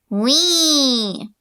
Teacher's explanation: This bright tone quality is mostly the result of less space in your vocal tract.